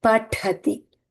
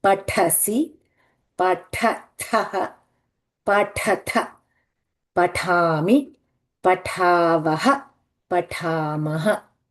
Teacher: Remember that tha has to be coming out very strongly. It is the Mahaprana.